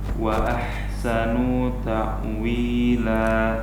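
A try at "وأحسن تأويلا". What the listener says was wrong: Hati-hati nunnya jangan memanjang. Dan ini terjadi karena nun ini berada pada akhir dari kata yang pertama. Ini yang harus kita jaga kemarin. Kalau berada pada akhir kata dan dia tidak panjang, harus kita ekstra hati-hati.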